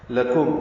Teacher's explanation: لام کو جلدی سے پڑھیں گے، کاف باریک، میم ساکن پہ اظہار شفوی